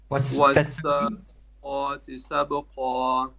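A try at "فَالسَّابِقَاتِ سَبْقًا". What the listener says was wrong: No, it's not. It's not. It's فَالسَّابِقَاتِ. Fa, not wa.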